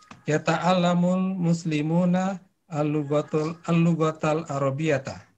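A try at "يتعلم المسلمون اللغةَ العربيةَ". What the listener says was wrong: Al-lughatal arabiyata. Jamil.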